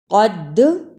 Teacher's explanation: دال جزم کی صورت میں حرف قلقلہ ہے، یعنی اس حرف کو ہلا کر پڑھنا ہے